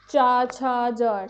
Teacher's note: तंत्र वर्ण वो होते हैं जिनका उच्चारण मुख के तालु यानी कि ऊपरी तालु से किया जाता है।